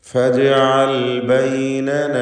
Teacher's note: ജീമിൻ്റെ സുക്കൂൻ ഖൽഖല സൂറ നൽകി ശബ്ദം ഹറക്കത്ത് പോലെ ചലിപ്പിക്കണം. ലാം ഇൽഹാർ ചെയ്യേണ്ട അക്ഷരമാണ്.